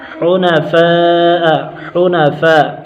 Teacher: فا پر مد متصل، حرف مدہ کے بعد حمزہ اسی کلمے میں ہے، 2 2.5 4 الف تک کھینچ کر پڑھیں گے